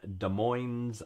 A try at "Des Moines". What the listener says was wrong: You do not pronounce the S in Des Moines.